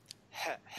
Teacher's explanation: Қаһарман, жиһаз дегендегі әрпі, мынау тамақтан жеңіл шығады